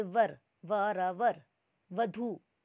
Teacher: एक होता है हिंदी के जैसा व जिसमें हमारा नीचे वाले लिप और ऊपर वाला टीथ टच करते हैं